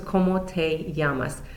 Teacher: Notice I didn't pronounce the L sound. Double L's in Spanish make a y sound.